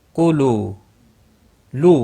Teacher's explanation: واو مدہ ہے، ایک الف کے برابر کھینچ کر پڑھیں گے۔